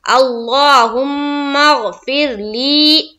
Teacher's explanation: یا مدہ کا قاعدہ، لی ایک الف کے بقدر کھینچیں گے۔ اللہم اغفر لی۔